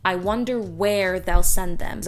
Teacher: i decided to put the emphasis on the word where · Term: operative word